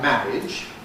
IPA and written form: ˈmænɪʤ (manage)